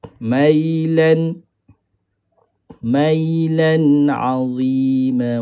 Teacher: Sama panjang. Mi dengan lu ni sama panjang. Mai tak boleh nak sama panjang dengan mi dengan lu. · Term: huruf lin